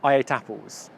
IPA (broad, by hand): eɪ. ˈta. p(ə)lz